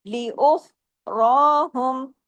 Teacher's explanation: उख रहु उख को हैवी र को हैवी भी ख को जमाऊ के साथ र को हैवी लेकिन दो हरकात खींचना है अलिफ के बराबर